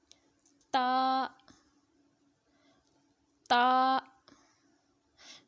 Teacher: زبان کی نوک جب اوپر کے اگلے دو دانتوں کی جڑ کی طرف والے آدھے حصے سے لگے گی تو تا ادا ہوتا ہے۔ تا، تا کو ایک الف کی مقدار تک لمبا کر کے پڑھیں گے۔